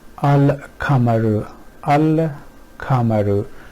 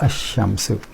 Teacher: So ignoring this, in a way what they're doing is either we can say they convert lam to sheen, or because lam is ignored, so sheen is pronounced twice, whichever way we look at it. The point is that lam is not pronounced and you go right from hamza to sheen and the flow is much better. Here in this case the lam is from the front part of the oral cavity and kaf is somewhere here, so the articulation points are a bit far from each other and it becomes easy to pronounce them.